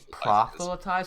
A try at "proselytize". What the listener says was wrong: proselytize or it's proselytize? Proselytize. Yeah, there's no. Yeah, because of the word prophet, I know why like you try to put that F in, but it's just proselytize.